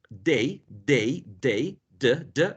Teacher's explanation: The first sound in the first word, day, is alveolar. An alveolar sound.